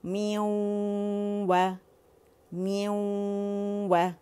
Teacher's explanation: آپ دیکھیں غنہ کس پہ بنا؟ ساکن واو کے اوپر، و کو میں نے ظاہر کیا